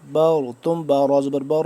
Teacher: با کو پر را کو پر پڑھیں گے